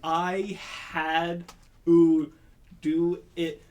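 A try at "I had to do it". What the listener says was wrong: That was a glottal stop.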